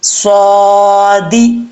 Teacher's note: صاد کے اوپر کھڑا زبر ہے، ایک الف کی مقدار اس کو لمبا کر کے پڑھیں گے